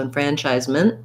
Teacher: t it's okay to say enfranchisement with a small t but you might notice native speakers stopping that t and not really releasing it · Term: stop t